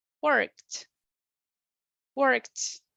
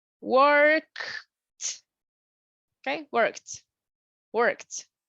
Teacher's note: So the pronunciation will be worked, worked. Imagine that instead of the ED, you have a T.